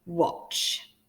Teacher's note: It's a trigraph at the end. And this word's a little bit trickier because the letter A is making an oh sound.